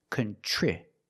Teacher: Then for the second syllable, we have TR, and TR makes the ch sound like chicken, plus the R together, contri. The I after TR is a short I, so we make the sound I like this is.